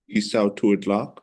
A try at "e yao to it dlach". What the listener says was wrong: But there's no sa. E yao to it dlach. E yao to it dlach. E yao to it dlach.